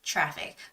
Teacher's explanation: when you say traffic it sounds more like a CH